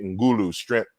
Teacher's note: the G form is voiced as a result of the nasal voicing here